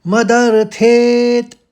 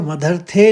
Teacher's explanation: मदरथे नहीं बोलेंगे मदरथेत हल्के से त आएगा